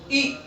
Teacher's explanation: ई, तालु। ई जब हम बोलते हैं तो हमारा जीभ उठी रहती है ऊपर की तरफ, यानी तालु की तरफ।